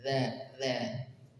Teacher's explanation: ujung lidah bertemu dengan ujung gigi seri atas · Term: huruf zal